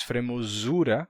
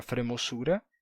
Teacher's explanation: O português, por outro lado, mantém a distinção de Z e S, a gente diz fremosura, como era antigamente, e os galegos passaram a fremosura e perderam o som de Z, que se tornou S.